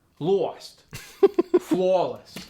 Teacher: The aw sound gets stretched out further to the bottom part of the mouth, and it gets like a W in front of it.